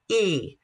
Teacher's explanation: High and front, E. Notice my vowel is very forward. It's high.